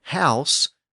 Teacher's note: of the letter H it just represents a breathy sound so in a word like house the H is just a breathy sound